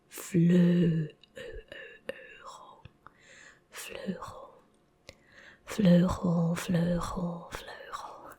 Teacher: EU is ö, not ow, not oe, not u